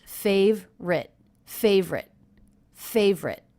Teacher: the word favorite was pronounced with only 2 syllables, as if this letter was dropped.